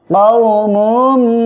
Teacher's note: মিম মিম দুই পেশ মুম, তানবিনের পরে ঈদগামে বা গুন্নার অক্ষর মিম আসছে, গুন্নার সাথে মিলিয়ে পড়তে হবে